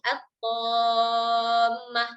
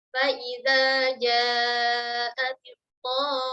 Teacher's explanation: Jangan lupa mim yang bertasydid wajib ada gunnah, tidak boleh langsung at-tammah.